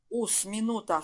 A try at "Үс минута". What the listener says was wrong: Үс. Не ус, а ü. Үс. Там с еще мягко должно быть.